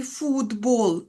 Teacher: Пишемо т. А насправді у нас тут звук д. Вокзал. Звук д от звінчується. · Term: одзвінчення